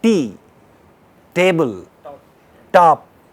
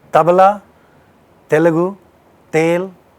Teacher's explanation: Do you feel the tip of the tongue going in the middle of the upper teeth and lower teeth? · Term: dental sounds